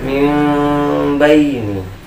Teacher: Seolah-olah menjadi mim. Kemudian menggunakan pengucapan mim yang disamarkan selama 2 harakat. Berarti kita harus gunakan di sini karena nun sukun bersama ba ini selama 2 harokat ya. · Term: iqlab